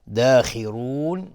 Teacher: داخرون خا از حروف استعلاس و را هم حکمش استعلاس چون ضمه داره. داخرون مد عارض للسکون به مقدار 2 یا 4 یا 6 حرکت میتونیم مد بدیم